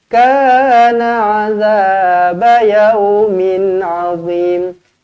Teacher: Tanwin selari bertemu dengan ain, izhar halqi dibaca dengan jelas dan terang.